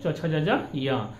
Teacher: चवर्ग का उच्चारण स्थान तालु हो गया